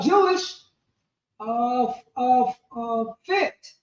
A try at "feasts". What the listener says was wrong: Feasts. So those F's are because Old English, all those F's is how they wrote the S.